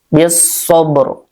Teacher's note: Waqaf isyarah ya. Terdengar tapi seperti setengah harokat ya.